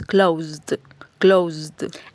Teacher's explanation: Por así decirlo no se pronuncia con la e sino que directamente se pronuncia una d es decir unimos la z con la d